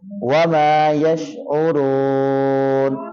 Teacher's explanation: آگے واو ہے، ہونٹوں کو گول کر کے پڑھیں گے، اور آگے را کو پر کر کے پڑھیں گے موٹا کر کے